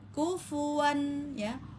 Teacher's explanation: Kufuan langsung kita pendekkan kufuan, ya. Kufu jangan dipanjangin ya. Tidak tidak dibaca panjang karena tidak ada mad.